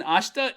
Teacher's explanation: this e in ashta isn't pronounced too hard so we're just gonna kind of slur over it